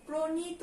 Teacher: পয়ের সঙ্গে একটা ওকার যোগ হয়ে যায়, ন দন্ত ন হয়ে যাবে, তয় ওকার হয়ে যাবে, প্রণীত উচ্চারণ করি এটা আমরা।